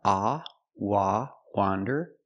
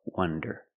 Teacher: Wander with the open sound, ah, wah, wander, and wonder with the closed sound, wonder.